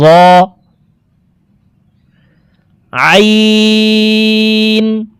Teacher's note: আইন হরফকে হলকের মধ্যখান থেকে উচ্চারণ করব, কারণ আইনের মাখরাজ হলকের মধ্যখান থেকে হবে।